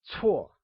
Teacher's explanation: Bad translates to 错 and is pronounced using a falling tone or the fourth tone.